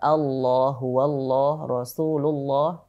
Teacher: lafadz Allah tersebut sebelumnya huruf yang berharakat dhammah dan fathah ini lafzul jalalahnya kita kita baca tebal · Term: dibaca tebal